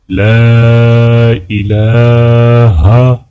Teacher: لام کو الف کے ساتھ ملاتے ہوئے لام کو کھینچ کر پڑھا جائے گا، اور الہ کے لام کے اوپر کھڑا زبر ہے تو یہاں پر بھی لام کو ایک الف کے برابر کھینچا جائے گا۔